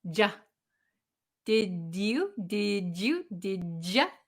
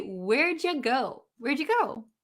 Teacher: did you, this is going to become ja